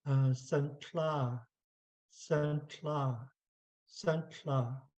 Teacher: And our voice doesn't go up at the end like in English.